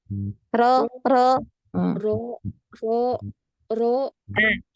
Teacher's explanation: ujung lidah di depan ya di depan tetap di depan hanya saja belakang lidah kita itu naik dia naik ke langit-langit ya · Situ kalau R yang Ana rasa ya. Jadi huruf ro itu maju lagi dekat dengan gusi ya. Gusi gigi atas.